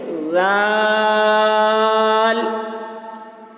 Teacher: زبان کی نوک کو تھوڑا دانت سے باہر نکالتے ہیں اور پتلی آواز سے بولتے ہیں